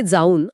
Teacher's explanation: आता जामध्ये दीर्घ आ आहे, ज्याला उच्चारायला आधीच जास्त वेळ लागतो, आणि पुढे ऊन मधला ऊ सुद्धा दीर्घ आहे.